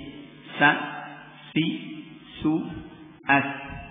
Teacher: Shafir ini huruf yang berdesis ya. Berdesis. Nah, keluar dari tarful lisan, dari ujung lidah juga ya. Jadi ujung lidah ini ngumpul banyak sekali ya. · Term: huruf shafir